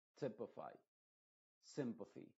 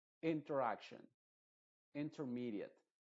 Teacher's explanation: para nosotros va a sonar como una E, pero no una E clara, sino que una E muy apagada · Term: I modificada